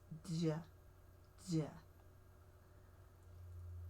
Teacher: It's got the zh sound with a d in front of it. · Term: the j